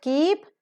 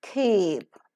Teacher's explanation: it is not just keep, it is keep. A slight h sound is to be heard. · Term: aspiration